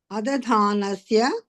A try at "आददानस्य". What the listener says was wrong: Adadanasya. It is not dha, it is Adadanasya.